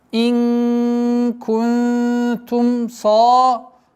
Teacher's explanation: Удержание сокрытия в размере двух огласовок, мягкое сокрытие, первое и второе.